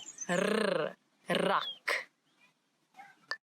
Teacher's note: it's the rrr, as if your tongue is jumping up and down in your mouth.